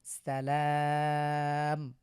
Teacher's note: শেষে আমরা ওয়াকফ করবো এজন্য এক আলিফকে তিন আলিফ টেনে পড়বো